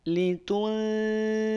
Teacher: di sana ada nun sukun bertemu dengan huruf zal, disamarkan nun sukunnya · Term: ikhfa